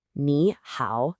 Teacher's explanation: The rule is simple. When you have two third tones back to back, the first one magically changes into a second tone, a rising tone. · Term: tone sundi